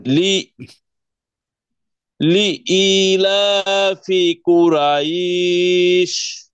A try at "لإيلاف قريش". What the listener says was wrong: রটা আর একটু মোটা হবে, রইশ।